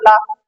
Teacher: अब ला बोलोगे तो आपकी जीभ तो ऊपर टकरा गई है, लेकिन हवा कहाँ से निकल जाएगी आपकी? साइड से निकल जाती। उसी को हम बोलते हैं पार्श्व। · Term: पार्श्विक